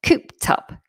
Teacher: this ends with an ED, but it sounds like a T